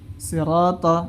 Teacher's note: Kemudian menipiskan huruf ra dan ta pada kata sirata.